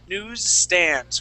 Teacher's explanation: that S right after the W, that's going to be a Z sound. And then going into that S for the word stand, that's an S sound.